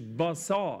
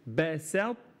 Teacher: السين حرف اضعف من الصاد الاخطاء الشائعه عند نطق بحرف السين بعض القراء ممكن يفخم حرف السين لما تجاور الصاد او لما تجاور حرف مستعلي او الف ماديه ده خطا طبعا لان السين حرف مستفل مرقق